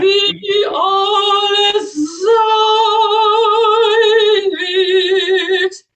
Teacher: you can get the unvoiced S, alles, and the voiced S without shadow vowel in the middle. Not alles sein wird, but alles sein wird.